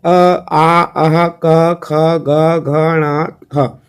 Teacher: कंठ से उच्चारित होने वाले वर्ण